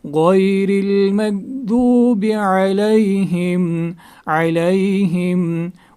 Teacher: عین کو نکالیں گے حلق کے درمیانی حصے سے